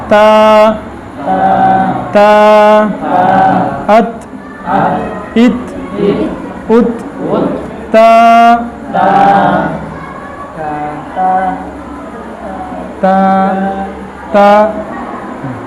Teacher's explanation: زبان کا سرا اور ثنایا علیا کی جڑ، اس سے تا ادا ہوتی ہے